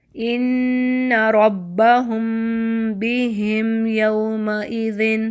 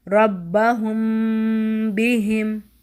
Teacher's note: تو میم پر ہم نے لپس بند کیے اور غنہ کرتے ہوئے ہم با کے مخرج پر چلے گئے